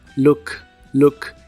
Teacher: El verbo mirar en inglés es look. La doble O de esta palabra se pronuncia como una U corta y explosiva.